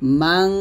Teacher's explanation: এখানে ন বাদ দিয়ে অনুস্বর বলবেন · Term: গুণনা